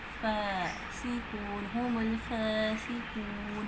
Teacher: لام ال کا اظہار ہو رہا ہے, فا پہ کھڑی زبر ہے تو اس کو کھینچ کے پڑھیں گے. فا دونوں ہونٹوں سے ادا ہوتی ہے, فاسقون, ہم الفاسقون.